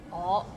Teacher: Sometimes we get lazy and we just say 我 like o sound instead of ngo.